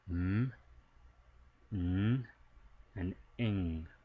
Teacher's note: We have nasal sounds, so these are actually being produced somewhat with our nasal cavity, meaning some air is actually going through our nose, escaping through our nose when we're producing these sounds